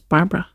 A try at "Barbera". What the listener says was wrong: Oh, Barbara has an other A in it. Barbara. Barbara.